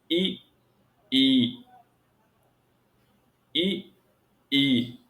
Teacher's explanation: ई और ई बोलते समय हमारा सबसे अधिक सक्रिय अंग तालु होता है। तालु इसलिए कि हमारे स्वर तंत्रियों से जो वायु निकल रही है, उसका सर्वाधिक घर्षण हमारे तालु से होता है।